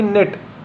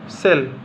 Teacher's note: इन सभी में आप देख पा रहे हैं आपको जो इसका उच्चारण है इ का वो आपको ए के जैसा मिल रहा है